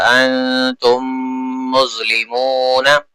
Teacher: یہاں دیکھیے green colour ہے، میم ساکن کے بعد ایک اور میم آ رہی ہے، اس وجہ سے تو ادغام شفوی ہو جائے گا